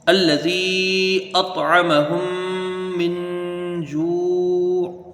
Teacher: وقف کی صورت میں عین ساکن ہو جائے گی